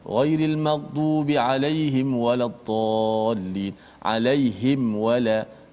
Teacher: supaya mim tu tak bunyi ikhfa, dia bunyi izhar, jelas mati